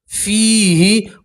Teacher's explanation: تنوین کی آواز کو آپ ناک میں چھپائیں گے اور ایک الف کے برابر گنہ کریں گے، قتال فیہ، اور فا کے ساتھ یا مدہ اس لیے آپ حضرات ایک الف کے برابر کھینچیں گے